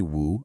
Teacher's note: a falling rising third tone